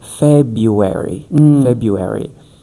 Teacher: we don't pronounce the first R in American English.